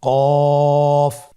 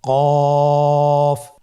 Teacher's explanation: জিহ্বার গোড়া তার বরাবর উপরে তালুর সঙ্গে লাগিয়ে উচ্চারিত হয়। জিহ্বার গোড়া তার বরাবর উপরে তালুর সঙ্গে লাগিয়ে উচ্চারিত হয়।